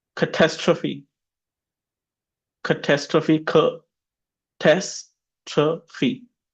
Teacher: Yeah, on the second syllable. It means disaster, and the stress is on tas.